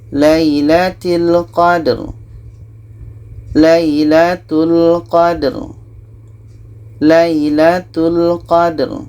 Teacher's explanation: Ra ini tawassut, mesti kita alirkan.